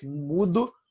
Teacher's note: a palavra mudo ela é paroxítona, a força é na penúltima. São duas sílabas, né?